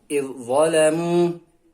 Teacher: Nah, huruf zal sukunnya hilang ya. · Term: idgham mutajanitsan